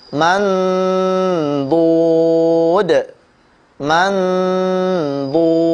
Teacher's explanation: sisi lidah, baik sebelahkah kanan atau kiri, atau kedua-duanya nempel pada gigi geraham atas ya, maka disitulah bunyi dengungnya mandud. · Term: huruf dad